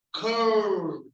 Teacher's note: So when you say curl, the L, your tongue curls back.